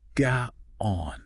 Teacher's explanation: The glottal stop. Some of the dialects, especially in the South, they keep this little catch in the throat. Standard Tagalog kind of smooths it over.